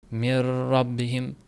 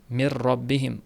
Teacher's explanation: Biz aytdik g'unnasiz idg'om bo'ladi dedik. Ro harfi bilan lam harfida g'unnasiz idg'om bo'ladi. Mana shu yerda g'unna qilib qo'yish xato bo'ladi.